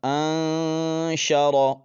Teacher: آواز کو ناک میں چھپائیں گے نون پر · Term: اخفا